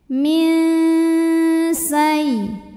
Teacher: nun sukun bunyinya samar-samar, siap-siap ke sin disertai bunyi dengung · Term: ikhfa awsat